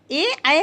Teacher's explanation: ए ऐ का उच्चारण स्थान कंठ तालु होता है।